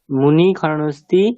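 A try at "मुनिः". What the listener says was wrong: বিসর্গটা উচ্চারণ করো, মুনিহি, বিসর্গটা উচ্চারণ করো।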